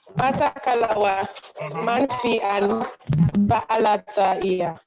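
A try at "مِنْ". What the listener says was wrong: It's not man, it's min. Min.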